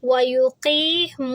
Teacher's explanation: وَيُقِيمُ، واو سے پہلے پیش، واو ساکن سے پہلے پیش ہے تو یہ بھی مد طبعی ہے، یہاں پر بھی آواز 2 حرکہ کریں گے